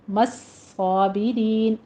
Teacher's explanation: صاد کی آواز آپ نے تشدید کی سختی سے ادا کرتے ہوئے پر کر دینی ہے